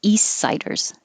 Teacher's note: And instead of saying east, I'm not going to release the T, and you won't even hear the T at all. I'm going to keep my tongue in the S position, east siders. I'm going to stop the airflow by touching my tongue to the top and stopping the air, and then lowering it down and letting the air flow again.